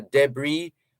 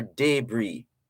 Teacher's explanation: So you could put the emphasis on the first syllable or the second syllable.